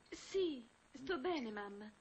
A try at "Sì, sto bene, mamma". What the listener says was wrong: Più su, devi essere anche felice.